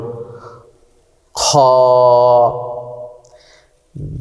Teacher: খ হরফটি হলকের তথা কণ্ঠনালীর শেষ হইতে উচ্চারিত হয়।